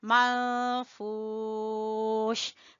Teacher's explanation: فا کو کھینچیں گے واو مدہ کی وجہ سے